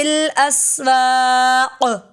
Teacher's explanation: قاف پہ کلکلا ہوگا وقف کی صورت میں